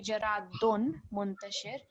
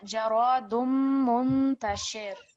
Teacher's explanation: we're joining this dal with the Meen Mushaddad. So you're not going to hear the Tanween sound. It won't be Jaradun Muntashir, but it's going to be only the Meen Mushaddad that you're going to hear.